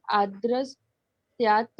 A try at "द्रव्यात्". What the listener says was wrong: आद्र नहीं है, आ कहाँ है वहां पे? तेल सर्पी ही